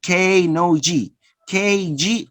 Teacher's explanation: so these are velar sounds and also they are plosive